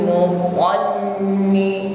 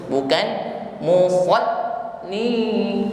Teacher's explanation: menekan pada huruf lam yang bertasydid, maka tampak sifat huruf lam di situ tawassut. Jadi suara tidak boleh putus, bukan musallin, suara tidak boleh putus ya, tawassut sifatnya.